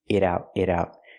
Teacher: And when I say she's blowing it out, the T in it is a fast D because it's between vowels.